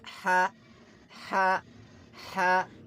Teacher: Ha is a throat letter. Pronounce it from the middle part of the throat cleanly.